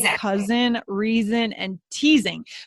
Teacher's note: If we haven't heard the word before, we may assume it's just that S sound, but it's actually the Z sound